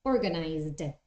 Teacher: This one is Z, organize. So the pronunciation of the verb in past is with a D, not with a T